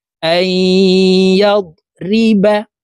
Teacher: হামজা ইয়া জবর আই, নুন সাকিনের পরে ইদগামে বা গুন্নার হরফ ইয়া আসছে, এই কারণে এই হামজা তাসদিদওয়ালা ইয়ার সাথে গুন্নার সহিত মিলাইয়া পড়তে হবে, মাঝখানে জজমওয়ালা নুন বাদ পড়ে যাবে